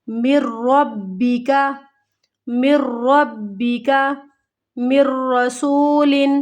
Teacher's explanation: اب یہاں پر دیکھیں یہ کیا ہے، نون ساکن کے بعد یرملون میں سے را ہے، مر ربک، مر ربک، مر رسول، ادغام کیا ہم نے، میم کو را کے ساتھ ملا دیا، ادغام ہو گیا بلا غنہ، غنّے کے بغیر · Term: ادغام بلا غنہ